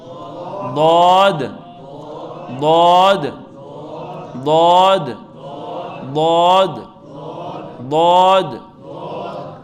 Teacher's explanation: مجھے زبان کی کروٹ جو ہے اوپر کے 5 دھاڑوں سے لگانی ہے، تب یہ ضاد بنے گا